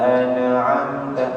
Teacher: nun sukun bertemu dengan ain, hukumnya idhar halqi, jelas tanpa dengung ya, dan juga tanpa memantul